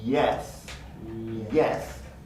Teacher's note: the tongue position for a y, which is a smooth moving tongue, a smooth tongue movement, begins in the high front area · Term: glide y